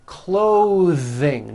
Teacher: Notice how my tongue comes out in the middle of the word and the TH sound is pushed out. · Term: voiced TH